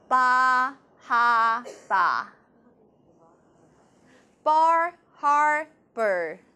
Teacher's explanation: 把 R 也去掉，这是 non-rhotic 的那个 speech。它在新英格兰区，尤其是这种状况